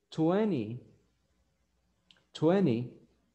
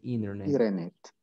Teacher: cuando ustedes tienen una letra N y una letra T juntas, la mayoría de veces la letra T no se pronuncia.